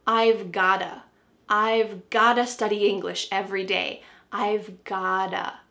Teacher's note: What's happening with the pronunciation? That T is changing to a D.